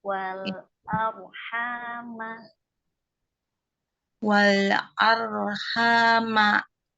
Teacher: Ujung lidahnya lebih kaku lagi, Om. Jadi dapat ro tebalnya karena ini ro-nya tebal ya, dibaca tebal.